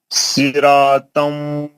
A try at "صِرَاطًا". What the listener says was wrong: سرا موٹا. ناک سے آواز نکالو.